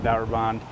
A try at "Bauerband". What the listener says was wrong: Bauerband. You made that German. Bauerband.